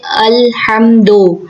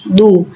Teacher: دال پہ پیش ہے تو پیش کو مجہول نہیں پڑھتے